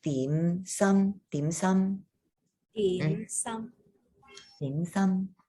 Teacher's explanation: And I know in English they call it dim sum, but if you wanted to pronounce it properly, it's your mid-rising dim sum